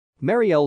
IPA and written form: ˈmɑːriɛl (Marielle)